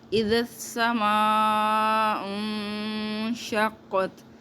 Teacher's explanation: ذال کا ساؤنڈ جو ہے وہ اوپر والے دانتوں کو، جو درمیان کے 2 دانت ہے، اس کو اندر کی طرف زبان لگاتے ہوئے آواز نکالنی ہے۔ اذا السماء انشقت، نون کا غنہ کرنا ہے۔